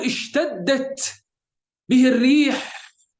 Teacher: والتاء هو حرف شديد، سبحان الله، هو بحد ذاته حرف التاء يحتوي على صنفين من الصفات، حرف شديد وحرف مهموس